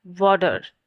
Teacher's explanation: the t sound between vowels is often pronounced as quick t sound known as flap